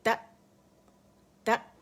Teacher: آواز سختی کے ساتھ، قوت کے ساتھ ٹھہر جاتی ہے، رک جاتی ہے، بند ہو جاتی ہے